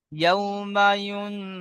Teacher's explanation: নুন সাকিনের পরে হরুফে ইকফার 15টি হরুফের মধ্য থেকে ফা এসেছে, তাই নুন সাকিনকে একালিপ পরিমাণ গুণনা করে পড়তে হয়